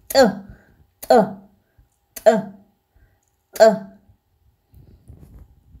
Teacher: Здесь у нас язык прикреплен к небу, но при этом у нас рот закрыт, и мы выплескиваем этот звук. При том, как мы приоткрываем рот, выплескиваем звук.